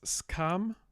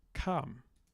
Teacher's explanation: in dialect G we lose that S before the aspirate, so kam, and I really like that.